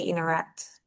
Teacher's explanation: But now in American English, the T is kind of absorbed.